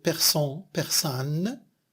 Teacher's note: La même chose en, an pour persan, persane. C'est une variation nasale qui devient une voyelle orale plus la nasale N.